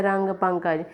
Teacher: हवा सिर्फ नाक से बाहर निकलती है और उच्चारण थोड़ा अधिक जोर से होता है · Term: अनुस्वार